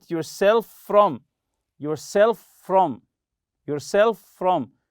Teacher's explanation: as if it's one word with one F sound